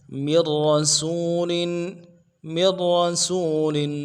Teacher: من میں جو مین نون ہے نون کو نہیں پڑھیں گے، میم کو آگے را کے ساتھ ملائیں گے